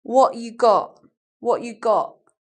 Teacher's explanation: I'm not saying T I just make a sort of absence of sound not saying something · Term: glottal stop